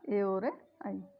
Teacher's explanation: ए आई कंठ तालव्य से, दो से मिलकर बोला जाता है